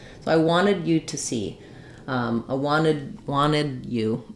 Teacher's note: We just won't release those T's.